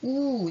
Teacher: 보통 섹시한 입술 모양 할 때 우 이런 소리 내죠? 우 할 때 입술이 이렇게 동그래지기 때문에 얘는 원순이고요